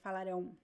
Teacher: you pronounce both vowels, and the A is very nasal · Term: nasal diphthong